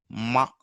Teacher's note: That's why it is called nasal. But there is sudden release of air, but through your nose